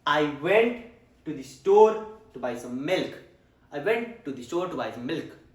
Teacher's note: So went, store, buy, milk. These were stressed. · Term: stressed words